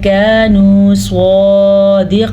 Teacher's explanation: कानू स्वादिकीन, यहाँ पे मैंने इख्फा किया है क्योंकि नून साकिन के बाद काफ हरूफ इख्फा में से आया है। स्वाद को पुर पढ़ना है और काफ को भी पुर यानी कि मोटा करके पढ़ना है, ये दोनों हरूफ मुस्तारिया में से हैं।